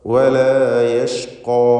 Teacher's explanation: വലാ യഷ്ഖാ ഖാഫിനും അലിഫിനും പൂർണ്ണമായ തഫ്ഖീം കൊടുത്ത് സ്വരഭാരത്തോടെ ഉച്ചരിക്കുക.